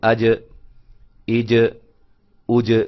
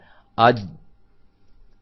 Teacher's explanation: یعنی کہ زبان کا جو درمیانہ حصہ ہے جب تالو کے ساتھ اوپر چمٹتا ہے، ملتا ہے، تو وہاں سے جیم ادا ہوتی ہے